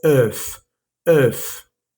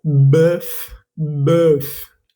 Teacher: Este es un sonido que tampoco existe en español, pero es como una O y una E, como si intentaras decir ambas al tiempo. Entonces tus labios no son ni de O ni de E, es como en el medio.